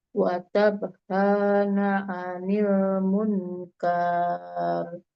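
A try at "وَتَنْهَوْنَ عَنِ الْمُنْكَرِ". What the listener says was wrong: Munkar, pendek nih. Watanhauna 'anil munkar. Munkar ikhfa. Ulangi, watan ya, bukan watab. Watanhauna 'anil munkar.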